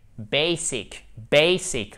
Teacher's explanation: Accent tonique sur la première syllabe.